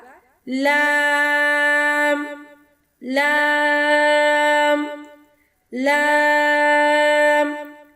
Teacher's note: لام، زبان کے کنارے سے ادا ہوگا۔